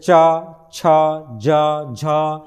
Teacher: जिन व्यंजनों के उच्चारण में जीवा का अग्र भाग कठोर तालू को स्पर्श करता है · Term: तालव्य व्यंजन